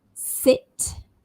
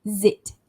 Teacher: S is voiceless. Sit. Z is voiced, as in zit. Z, as you touch your throat, you'll feel the vibration when you say z.